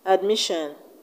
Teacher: in the word admission we have the stress on m i